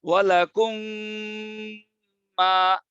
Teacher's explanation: মিমের পরে যদি আরেকটা মিম আসে, তখনও এই মিম আর মিমের মাখরাজে থাকে না, নাকে চলে যায়। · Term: গুন্নার হরফ